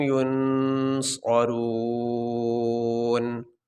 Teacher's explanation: یہ آیت یہاں پہ مکمل ہوگی، یہاں پہ ہم وقف کریں گے۔ وقف کرنے کی صورت میں نون کے اوپر جو زبر ہے یہ نہیں پڑھا جائے گا، نون کو ہم ساکن پڑھیں گے۔